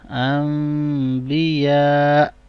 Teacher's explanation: حمزہ ساکن ہو جائے گا تو جرکنگ ساؤنڈ ہوگا یہاں پر